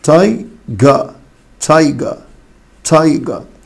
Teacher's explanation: في النطق البريتش ما بينطقوش حرف الار فتبقى تايجا